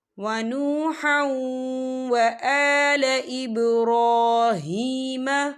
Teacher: یہ دیکھیں ونوحا، ہا کے پر تنوین ہے، تنوین کے بعد جو ہے واو آ رہا ہے، اور واو جو ہے حروف یرملون میں سے ہے، تو یہاں پر ادغام ہوگا، تھوڑا سا غنّے کے ساتھ پڑھیں گے۔